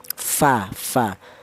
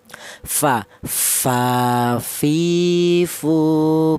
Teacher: fa itu berasal dari bibir bawah bagian dalam sing jero menyentuh ujung gigi seri atas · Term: huruf fa